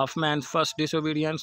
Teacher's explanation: the first syllable is unstressed and then stressed